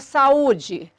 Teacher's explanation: No caso da palavra saúde, a sílaba tônica é a penúltima e é uma paroxítona acentuada devido ao U tônico do hiato, formando sílaba sozinho, obrigatoriamente acentuado. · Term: hiato tônico